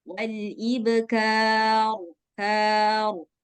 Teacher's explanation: Nggak kayak ro Indonesia. Kalau ro Indonesia kan banyak getarannya. Nah, tapi dia ada getaran sedikit.